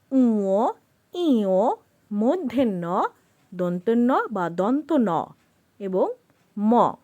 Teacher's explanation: কিছুটা নাকের উপর জোর দিয়ে এই বর্ণগুলো উচ্চারণ করতে হয় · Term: নাসিক্য বর্ণ